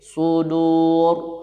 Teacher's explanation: ra-nya itu dibaca tafkhim